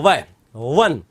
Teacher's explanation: वह के उच्चारण में नीचे का होंठ और ऊपर के दांत काम में लिए जाते हैं।